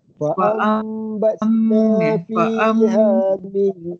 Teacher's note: Fa'am mulut ni dia ganggang sikit sebab apa, dia ada huruf mim tu, lepas tu mesti ada huruf ba, ada ikhlab. Jadi dia ikhlab, dia kena dengung. Fa'am dia nun tu tukar kepada huruf mim.